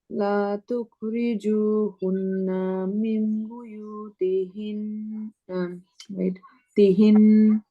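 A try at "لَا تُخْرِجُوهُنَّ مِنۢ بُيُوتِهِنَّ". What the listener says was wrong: এখানে তোমার লাতে একটু টান হবে, কারণ কি বলতো, এখানে একটা আলিফ আছে। লা তুখরিজুহুন্না। আমি নুনে বলছিলাম, নুনে যখন সাদ্দা হবে টেক টাইম।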